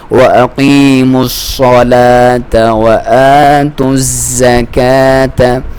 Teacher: واو کو ہونٹوں کی گولائی سے کھڑی زبر ہے الف پہ تو ایک الف کے برابر لمبائی